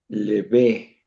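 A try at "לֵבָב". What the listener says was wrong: Es una Tau al final.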